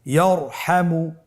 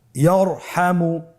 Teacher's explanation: তাহলে ইয়ারহামু, র সাকিন তার পূর্বে জবর আছে, র সাকিন তার পূর্বে যদি জবর থাকে অবশ্যই রকে পোর করে মোটা করে পড়তে হবে